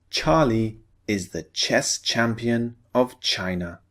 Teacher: we're focusing on the unvoiced sound. Ch.